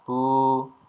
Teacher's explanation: berharakat damah diikuti dengan wau sukun maka dia akan berbunyi u dengan panjang panjangnya berapa satu ayunan atau dua harakat